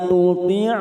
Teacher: hati-hati membunyikan huruf po yang bersebelahan dengan huruf ta ya, karena ta ini tipis dan huruf po ini tebal